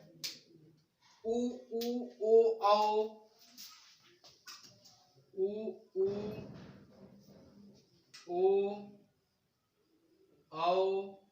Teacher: देखिए, वृत्तमुखी जिनके उच्चारण में ओठों की आकृति या बनावट गोलाकार या वृत्त के समान बने, उसे हम वृत्तमुखी कहते हैं